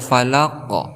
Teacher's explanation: Kemudian ada falaq. Di sini ada huruf qalqalah yaitu qaf, kemudian diwaqafkan ataupun di akhir kalimat, maka kita hukumi sebagai hukum qalqalah. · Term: qalqalah kubra